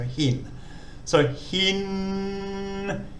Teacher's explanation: So once again, it's got a rising tone. Hin, starts off normally, then goes up.